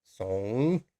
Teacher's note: It's a bit like asking a question, but you have to go down first and then up.